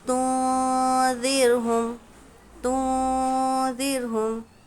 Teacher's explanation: ذال ہے، ذال حروف اخفاء میں سے ہے، تو نون کی آواز کو ہم ناک میں چھپا کر پڑھیں گے، یعنی تنذرہم نہیں پڑھیں گے بلکہ تنذرہم۔ · رو ساکنہ سے پہلے زیر ہے اس لیے یہ رو باریک پڑھی جائے گی۔